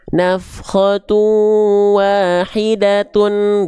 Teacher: Jadi nggak dibaca nafkhatu wahidat, enggak. Dia dibaca menjadi huruf ta kalau dilanjutkan ke huruf berikutnya.